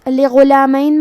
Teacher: کلمت لغلامین میں غین کی ادائیگی حلق کے اوپر والی حصے سے ہے. غین حروف تفخیم میں سے ہے لہذا ہمیں غین کو موٹی آواز میں پڑھنا ہے. میم پہ زبر ہے اور یا پہ جزم ہے تو ہم یہ دونوں حرکات کو ظاہر کریں گے.